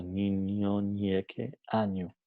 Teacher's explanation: El fonema ñe es un fonema nasal palatal sonoro. Entonces, nasal, como he dicho, porque el aire a la hora de pronunciar el sonido ñe sale por la nariz. · El dorso de la lengua toca en la parte palatal, ñe, en la parte palatal que está justo después de la parte alveolar. Y es sonoro porque la vibración ocurre, como he dicho, antes de la pronunciación, no después, no a la hora de pronunciar.